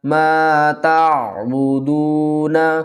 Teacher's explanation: دال کو 1 الف کی مقدار کھینچ کر پڑھیں گے، واو مدہ ہے آگے ، نون کو وقف کی صورت میں ساکن پڑھیں گے۔ ما